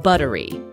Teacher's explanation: Just like in butter, the double T in buttery is also pronounced as the fast D sound in the American accent